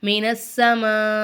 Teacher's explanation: ஹம்ஸா வந்து கல்கலாவுடைய எழுத்து கிடையாது அதனால நம்ம என்ன செய்யக்கூடாது அசைக்கக்கூடாது